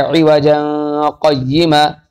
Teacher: تو اس وقت یعنی جب یہاں پہ ترک سکتہ کیا جائے، یعنی سکتہ نہ کیا جائے، تو اس وقت موضع اول یعنی عوجن قیمہ میں اخفا ہوگا، کیونکہ دو زبر کی تنوین کے بعد قاف آ رہا ہے 15 حرفوں میں سے، لہذا پڑھا جائے عوجن قیمہ، اور ثانیین میں ادغام ہوگا۔